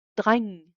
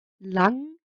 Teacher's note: n plus a g creates this nasal sound where only half the g is pronounced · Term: ng sound